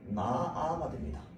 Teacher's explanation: 그래서 이거 무슨 현상? 히읗 탈락 현상